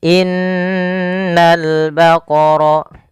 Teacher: Yaitu pada lafal ini suara nunnya ditahan, dan nun ketika dia berharokat tasydid kita hukumi dengan bacaan namanya gunnah. Cara membacanya, menahan dulu suara n-nya sepanjang 2 harokat baru dilepas.